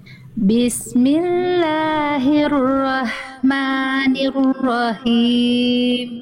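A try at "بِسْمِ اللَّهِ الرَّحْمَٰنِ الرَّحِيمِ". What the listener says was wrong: Ya Allah yang himnya kurang ya rahmannya bagus Bunda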